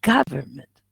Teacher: the primary stress in here is on the first syllable